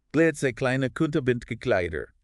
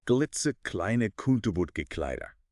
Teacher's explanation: That velar stop K, back of the tongue hitting the soft palate